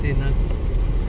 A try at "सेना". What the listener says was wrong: बस स और श ठीक कर ले।